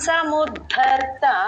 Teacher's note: ద కింద ధ వత్తు మహాప్రాణం అండి